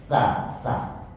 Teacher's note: kalau huruf sa itu desisnya keluar seperti desis yang satu cerobong artinya satu lubang keluar desisnya